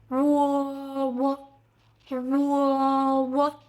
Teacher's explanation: Start with brief u, lips rounded, then open into o.